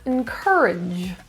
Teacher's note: Reduce the vowel as much as possible. The stress is in the second syllable.